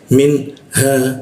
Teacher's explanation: nun mati di bawah hidung, ha di tenggorokan bagian bawah